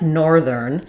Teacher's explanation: So nor is going to be longer, thern is going to be shorter. Part of why this word is so difficult is that we have to do the TH and R close together, and this one is quick and unstressed. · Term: stressed syllable